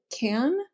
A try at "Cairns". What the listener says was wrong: Yeah, but no R. Don't pronounce it R.